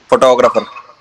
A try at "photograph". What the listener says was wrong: लेकिन फोटोग्राफर नहीं बोलना, जहां आपने इसे फोटोग्राफर बोल दिया ना, आपने दोनों दोनों वर्ड्स को अलग कर दिया, एक ही वर्ड है।